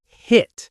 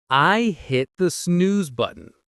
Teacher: Notice that hit. It's a sharp T sound, not a soft one.